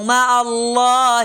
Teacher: مع اللہ لفظ اللہ موٹا کیا کیونکہ اس سے پہلے پیش آ رہی تھی۔